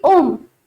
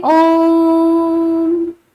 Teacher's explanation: प्लुत स्वर वे स्वर होते हैं जिनको बुलाने में, अर्थात जिनका उच्चारण करने में, जिनको बोलने में हमें 3 गुना समय लगता है। ह्रस्व, दीर्घ और प्लुत, इन सबसे 3 गुना समय लगता है। · ओम को हम तुरंत नहीं बोलेंगे कि ओम, इसका उच्चारण हम देर तक करते हैं ओम, तो हमें 3 गुना समय लगता है, बहुत ही ज्यादा समय लगता है हमें किसी भी वाक्य को उच्चरित करने में।